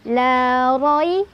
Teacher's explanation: Ro-nya dia dibaca secara tafkhim karena ada ro berbaris di atas atau fathah. Jadi ditebalkan ro. La roi. Roi adalah harf lin karena ada ya sukun sebelumnya ada fathah.